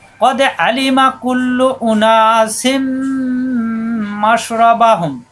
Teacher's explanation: এখানে হচ্ছে তানবিন, তানবিনের পরে মিম, দুই জেরের এক জের মিমের সাথে গুণ্য হবে